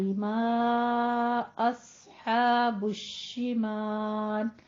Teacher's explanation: ما یعنی مد منفصل جائز، آپ ادا کرتے وقت ماں کی آواز نون کی نہیں لے کر آنی ہے، ماں نہیں کہنا ہے. ماں جیسے کا با تا کہتے ہیں اسی طرح سے ماں کو بھی، اور اس کو 4 کاؤنٹ کرنا ہے.